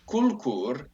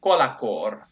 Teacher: they insert an epenthetic A between the L and the K. So from kulkur, we get kolakor.